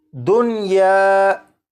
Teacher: इस लफ्ज़ में नून साकिन को या में इदगाम नहीं करेंगे बल्कि यहाँ पर नून साकिन को ज़ाहिर करके पढ़ेंगे और इस लफ्ज़ को पढ़ा जाएगा दुनिया।